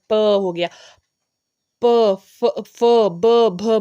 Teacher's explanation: ओष्ठ्य व्यंजन दोनों होस्ट जो द्वारा श्वास, मतलब जो दोनों जब होठ होते हैं वो आपस में स्पर्श करते हैं